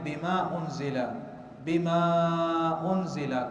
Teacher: اسی طرح ہم دیکھتے ہیں کہیں مد کی جاری ہے بما انزل، بما انزل، کبھی قصر ہے، کبھی توسط ہے، کبھی زیادہ طول کر لیا ہے، یہ عرب کے ہاں لہجات کے اختلاف ہے۔